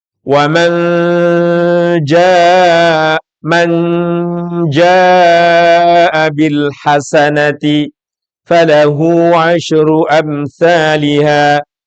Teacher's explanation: Man jaa, mesti ketemu huruf jim, nun bertemu jim. Jim masuk salah satu huruf ikhfa. Dia pasti bacaannya melibatkan hidung. Itu disebut dengan khayshumi.